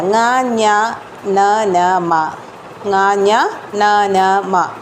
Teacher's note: ങ ഞ ന ന മ, ങ ഞ ന ന മ ഇതെല്ലാം നമ്മൾ മൂക്ക് ഉപയോഗിച്ചല്ലേ ഉച്ചരിക്കണം. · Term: അനുനാസികം